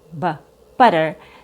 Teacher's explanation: So the T in butter, butter, is a fast D sound